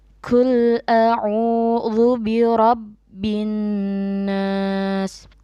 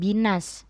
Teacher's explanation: Huruf nun dibaca double atau ganda, dan kita dengungkan. Kita membacanya dengan binnas, bukan binas. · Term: ghunnah